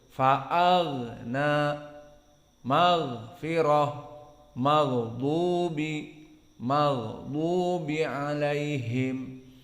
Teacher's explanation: pertemuan di huruf gha antara ar-rokhawah yang dia keluar suara dengan jahar yang tidak boleh ada kebocoran dalam nafas